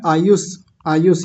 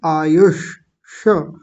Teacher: जीभ ऊपर जाएगी गोल घूमेगी और ऊपर गड्ढे में पहुंचेगी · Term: मूर्धन्य शकार